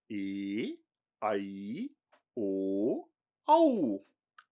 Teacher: ये च स्वराः द्वयोः स्वरयोः मेलनेन सम्भवन्ति ते सन्ध्यक्षराणि उच्यन्ते